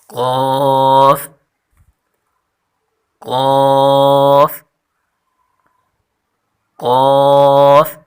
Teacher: قاف پر حرف ہے اور اس کی مخرج ہے زبان کی جڑ جب نرم تالوں سے لگے تو یہ حرف نکلتا ہے، یعنی زبان کی جڑ جب نرم تالوں سے لگے تو یہ حرف نکلتا ہے۔